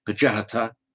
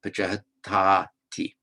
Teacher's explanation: It's just a phonetic lengthening before the T. So normally it would be pajahata, but then followed by T is pajahatati.